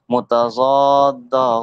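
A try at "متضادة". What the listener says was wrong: জি মুতাযাদ্দা না বলে দদ বলবেন ঠিক আছে পরে আরেকজন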